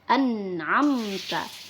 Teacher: Nah, di mana di hukum nun sukun dan tanwin, jika ada nun sukun bertemu dengan huruf ain, maka hukum bacaannya adalah izhar. Jadi nunnya harus dibaca jelas, tidak boleh dengung di situ.